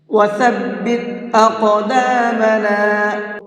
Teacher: قاف کو پر کر کے بھی پڑھیں گے اور ساتھ ساتھ اس کے اندر قلقلہ بھی کر کے پڑھیں گے